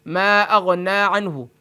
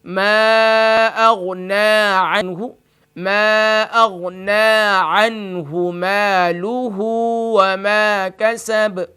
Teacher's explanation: اب اکثر رات پڑھتے ہیں اس کو ما اغنى عنہ، یعنی نون کو کھینچتے نہیں ہیں. جب نون پر کھڑی زبر کی علامت موجود ہے تو اس کو ایک الف کی مقدار کھینچ کر پڑھیں گے. اور یا اس کو پڑھتے ہیں میم کو بھی نہیں، الف کو نہیں کھینچتے، یعنی اس پر مد کی علامت بھی موجود ہے، تو اس کو ہم تھوڑا کھینچ کے پڑھیں گے.